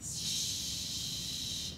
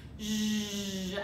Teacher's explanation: Unvoiced again, the steam version is shh, and the voiced version is zzz,